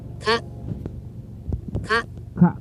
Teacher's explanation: No prolongation. Okay, it's not protracted. Not even a rising tone. It's not a rising tone.